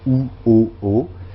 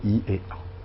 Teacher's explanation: il est plus en arrière pour ou o o que pour I et a